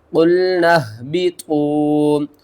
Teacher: قلنا اہبطوا، قاف لام پیش قل، نون ہا زبر نہ، با زیر بی، طا واو پیش تو، قلنا اہبطوا، نون کو ہم نے ہا کے ساتھ ملانا ہے، درمیان میں اس الف اور اس الف کو چھوڑ دینا ہے، قاف کو موٹا پڑھنا ہے اور لام کے ساتھ ملا کر پڑھنا ہے۔